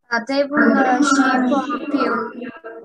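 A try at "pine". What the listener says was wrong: Не шип тут, не шип. Пайн. Мы же выяснили, открытый слог, гласное читается как в алфавите. Значит, она в алфавите. Ай будет давать такой же звук. Ай.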